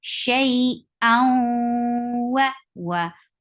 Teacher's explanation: This is idgham with gunna. You are merging the sound of tanween into waw, and with gunna, you are keeping the sound in your nose.